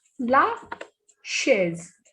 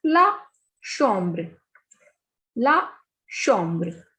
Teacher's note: The pronunciation of CH is sh in French. Sh. So the first example is la chaise.